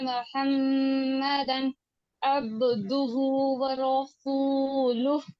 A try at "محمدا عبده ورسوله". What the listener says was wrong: میم ابھی بھی محمدن ادا نہیں ہوا۔ میم مجبور کیا،